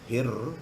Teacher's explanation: Jadi alif lam tu akan hilang bunyi dia. Dia langsung masuk kepada ra. Hir, matikan dia, kemudian hidupkan balik. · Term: alif lam samsiah